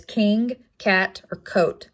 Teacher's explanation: because it's not voiced and next top consonant is the k it is a velar placement it is not voiced